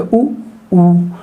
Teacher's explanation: अब आप उ और ऊ को बोल कर देखिए, असंभव है, आप उ और ऊ को बोल ही नहीं सकते। यानी कि जब भी आप उ और ऊ को बोलेंगे तो आपके होंठ जो हैं वो वृत्ताकार आकार में आपके बदल जाएंगे, उ ऊ, यानी कि होठों के में परिवर्तन हो रहा है। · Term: होंठ गोल